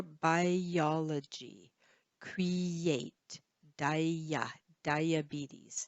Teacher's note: we don't stop the air when we say those words we say them as if they are one word and as if there's a little y in the middle all right we also link be in between words in sentences